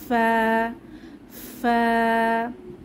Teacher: নিচের ঠোঁটের পেট সামনের উপরের দুই দাঁতের আগার সঙ্গে লাগিয়ে ফা উচ্চারিত হয়। আমরা অন্যভাবে বলতে পারি উপরের দাঁতে নিচের ঠোঁটে বাতাস চালু ফা ফা।